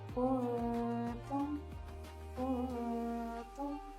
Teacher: dengungnya pun harus lebih ringan. Lidahnya harus datar.